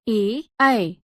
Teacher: कंठ तालव्य गले और तालु से